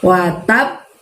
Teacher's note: karena ada tasydidnya juga maka waktunya nggak langsung mantul Nah kita dulu WhatApp tab-nya tahan sampai dua ketukan begini baru